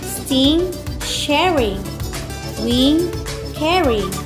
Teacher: the natural stress in sharing is on the ar and not the ing meaning the words are an imperfect rhyme